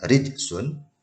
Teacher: kaidah bacaan Qalqalah Sugro Qalqalah dia berada di tengah kalimat ini Qalqalah kecil dibaca mantul tapi tipis saja kecil saja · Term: qalqalah sugoro